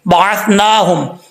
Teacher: سا کو بغیر سیٹی کے پڑھا جائے گا